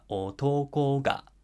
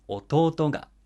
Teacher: when we add a particle ga, it goes down after the word itself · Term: final high pitch